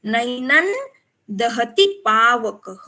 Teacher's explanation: त थ द ध न। तो यहाँ पे हमें अनुस्वार का उच्चारण न के जैसे करना है